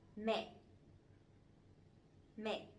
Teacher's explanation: But this one has the dot, the dấu nặng, the strong tone, so it has to be down and it has to be stronger a little bit